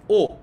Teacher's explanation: কিন্তু সংবৃত উচ্চারণের ক্ষেত্রে, অর্থাৎ সংশোধিত উচ্চারণের ক্ষেত্রে চোয়ালের ফাঁক কম হয় এবং ঠোঁট গোলাকৃত হয়ে ইংরেজি ও এর মতো হয়